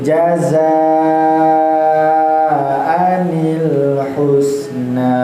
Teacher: Maka jazanya jangan pendek, bukan jazaanil, tapi wajib membacanya 5 harokat. Ya, tidak boleh kurang, tidak boleh lebih juga rasanya. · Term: mad wajib mutasil